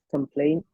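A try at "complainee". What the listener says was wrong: Almost. It's not complain. There's a double E at the end.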